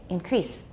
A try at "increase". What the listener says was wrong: You make it too long, then the S sounds like a Z.